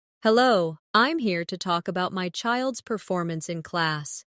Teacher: Stress performance. So, it's clear what you're discussing.